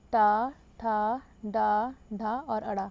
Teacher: टा वर्ग के सभी व्यंजनों का उच्चारण मूर्धा से होता है, इसलिए ये मूर्धन्य व्यंजन है